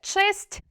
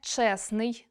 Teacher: звук т випадає, щоб не було трьох приголосних поруч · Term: спрощення в групах приголосних